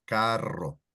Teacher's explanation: And carro, that means car, it rolls the R